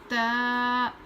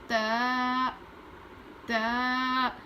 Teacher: زبان کی نوک کو اوپر کے دانت پر لگا کر پڑھتے ہیں